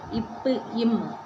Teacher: இரு மைகளும் மேலிதலும் கீழிதலும் பொருந்துவதால பிறகுது